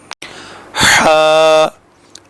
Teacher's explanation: اگلا حرف ہا ہے جو وسط حلق یعنی حلق کے بالکل درمیان سے ادا ہوتا ہے